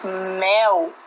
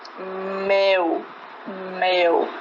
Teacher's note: de ar pelas fossas nasais dando um som nasal Por exemplo quando pronunciamos Mel o ar tem acesso a cavidade nasal